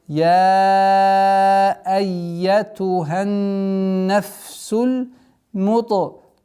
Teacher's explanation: Та, твердый звук, применяем правило калкаля.